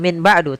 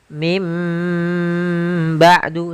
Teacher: bukan Min ba'du tapi mim ba'du sambil ditahan dengan gunahnya yaitu suara nunnya dirubah menjadi suara huruf mim · suara nun yang dirubah menjadi suara huruf mim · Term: ikqlab, iqlab